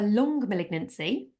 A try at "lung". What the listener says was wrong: And just to be super clear, you're saying a lung, not a long malignancy.